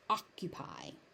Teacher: that c is not aspirated